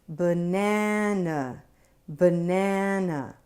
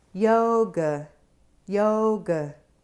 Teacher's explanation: It’s the resting vowel, and you’ll find it in the unstressed syllables of many words. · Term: schwa